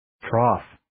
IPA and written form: trɑːf (Trough)